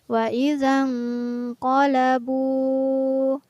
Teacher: Ada nun sukun yang bertemu dengan huruf qaf, maka nun sukunnya dibaca samar. Kurang tepat jika kita membaca wa idzan qalabu, karena di sini nun sukunnya tidak boleh dibaca jelas.